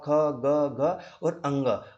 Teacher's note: उनका उच्चारण स्थान मेरे भाई गला यानी कि कंठ से होता है।